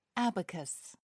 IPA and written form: ˈæbəkəs (abacus)